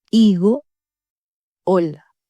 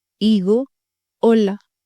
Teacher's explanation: La lettre H ne se prononce jamais en espagnol. Elle est totalement muette.